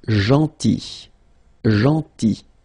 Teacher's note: So remember this final L is not pronounced.